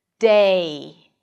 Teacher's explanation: the /e/ is a front vowel, rolls forward for the /ɪ/ as in 'sit' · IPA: /deɪ/